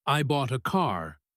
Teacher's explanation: the important words are bought and car. The other words are small and quick.